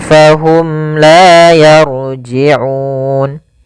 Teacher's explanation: mim mati bertemu dengan lam kita namakan dengan izhar syafawi suara mimnya harus jelas